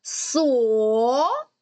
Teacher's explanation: перший склад звучить твердо другий склад звучить м'яко